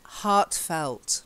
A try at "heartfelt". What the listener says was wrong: not heartless. heartfelt. Yeah, you said heartless. Honestly, you said heartless.